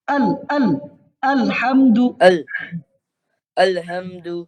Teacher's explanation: হামজাটা পাতলা হবে হামজা তো আইনের মতো হবে না আলহামদু الحمد আলহামদু الحمد না আলহামদু বলে তো আইন হয়ে গেল